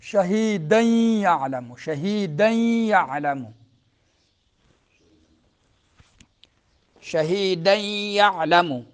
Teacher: دال کے اوپر تنوین آ رہا ہے، اگلا حرف جو ہے کیا ہے؟ یا ہے، ادغام مال غنہ